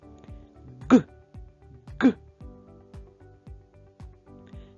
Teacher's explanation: цей звук дуже схожий на звук г правда але вимовляється він набагато голосніше та дзвінкіше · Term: звук Ґ